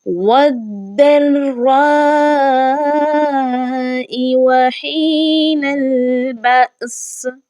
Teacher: درمیان میں آنے والا یہ جو الف ہے اور لام ہے یہ نہیں پڑھے جائیں گے، واو کو ہم نے ڈائریکٹ داد کے ساتھ ملانا ہے · اور داد اور را کی تشدید جو ہے یہ حقیقی تشدید ہے، تو لہٰذا یہ زیادہ مضبوطی کے ساتھ پڑھی جائے گی